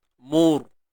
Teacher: Bila ra mati sebelumnya baris depan, kita kena tebalkan dia. Mur. Cuma jangan tahan suara.